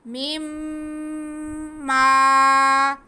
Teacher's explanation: فَأَخْرَجَهُمَا عَنْهَا فَأَخْرَجَهُمَا مِمَّا، جی مِمَّا، میم، من اور ما دو لفظوں کو ملا کے ایک لفظ بنا مِمَّا، تو یہ درمیان میں سے نون سائلنٹ کر کے دونوں کو ساتھ ساتھ کر دیا گیا۔ اب ہم میم کو میم کے ساتھ ملائیں گے اور میم پہ غنہ بھی کریں گے اور کھینچیں گے بھی کیونکہ ساتھ میں الف مدہ ہے